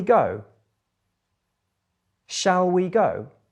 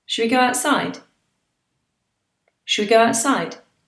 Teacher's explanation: shall we has been squashed into shwe it's a different sound